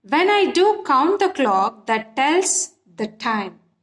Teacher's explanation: here we have stress, count, clock, tells, time. Okay, and where we have when, do, the, that, the or unstressed syllables.